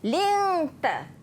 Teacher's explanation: Lingta ikhfa hakiki, juga dibaca dengan dengung.